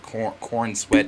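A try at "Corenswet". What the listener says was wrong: Not corn. Corin.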